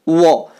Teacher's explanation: वो बोलते हैं तो जीभ फट से दांतों के पास जाकर वापस आ जाती है, इसलिए वो और फो का उच्चारण दंतोष्ठ है।